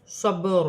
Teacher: با ساکن ہے، حروف قلقلہ میں سے ہے، قلقلے کے ساتھ ادا کیا جائے گا